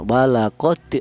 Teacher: jelas bahwa huruf dal ini dibaca qalqalah, yaitu ada suara pantulan